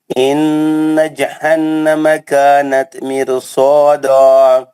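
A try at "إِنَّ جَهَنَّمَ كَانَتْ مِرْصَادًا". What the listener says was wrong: اس کو اور غنے اس کے دونوں غنے اور اچھے کر کے پڑھیں.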